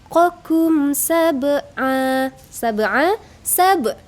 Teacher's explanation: Jadi kalau mim mati bertemu dengan Sin itu disebut dengan izhar syafawi bacaannya tidak didengungkan dijelaskan saja